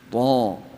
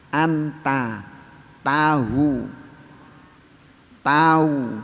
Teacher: Cuma bedanya sifatnya, warnanya. Ta itu punya sifat isti'la, lidahnya diangkat.